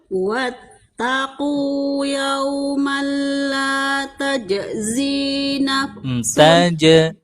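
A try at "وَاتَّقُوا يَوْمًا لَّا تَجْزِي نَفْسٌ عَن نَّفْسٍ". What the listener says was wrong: Itu fa-nya nggak, Bu? Fa itu gigi sama bibir. Naf. Jangan bibir sama bibir. Nggak dapat kalau bibir sama bibir. Gigi sama bibir.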